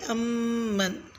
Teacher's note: لفظ امن میں میم مشدد پر غنہ کریں یعنی کہ امن۔